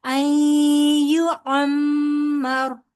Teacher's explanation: کیونکہ را ساکن سے پہلے زبر ہے، آپ یہ را پور پڑھیں گے